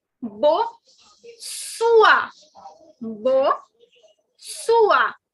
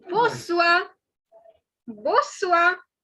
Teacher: So basically, the N is not to be pronounced. And second thing, the last R is not to be pronounced.